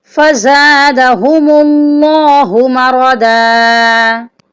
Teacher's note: اس کی صحیح ادائیگی ہے فی قلوبہم مرض فزادہم اللہ مرضا، یہاں پر اللہ کے نام سے پہلے میم کے اوپر پیش ہے، اس لیے اس کو ہم موٹا کر کے پڑھیں گے